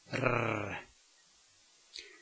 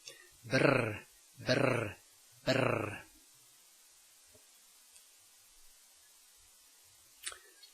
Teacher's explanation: pronounced like in Scottish English with the tip of the tongue vibrating. R. This may be hard if you are not used to it.